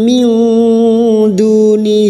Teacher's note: kita samarkan bunyi nun sukun dan mendengung selama harakat nun sukun atau tanwin yang bertemu dengan 15 huruf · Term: Ikfa Hakiki